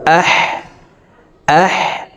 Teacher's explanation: হার মাখরাজ হলকের মধ্যখান থেকে হবে। তাই আমরা এই হাফকে হালুকের মধ্যখান থেকে উচ্চারণ করে পড়বো।